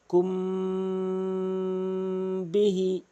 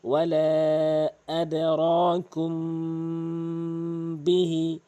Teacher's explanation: এই মিম সাকিনকে কখনোই আপনি গুন্নাহ গুন্না ছাড়া পড়তে পারবেন না, অবশ্যই গুন্নাহ করে পড়তে হবে। যেমন কুম বিহি এভাবে গুন্না করবেন, ওয়ালা আদরাকুম বিহি।